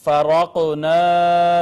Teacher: را مفتوح ہے لہٰذا اس کو ہم نے پر کر کے پڑھا